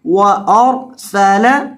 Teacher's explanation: را کو موٹا کریں گے سین میں سٹی پیدا کریں گے